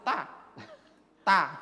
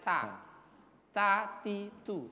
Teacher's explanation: Ada hamasnya, ada angin yang mengalir.